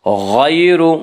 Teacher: یا لین کو نرم آواز کے ساتھ جلدی پڑھیں گے